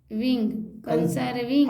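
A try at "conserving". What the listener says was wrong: अब एस को स बोलते हैं, ज भी बोलते हैं, ज बोल। अब स को ज बना दीजिए। स को ज बना के बोलिए।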